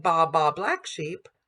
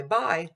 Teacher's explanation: we can hear that we have a monophthong and a diphthong.